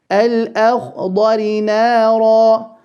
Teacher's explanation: The kha full, but prior to that, the lam of al will be made clear or idhar because it's followed by a hamza.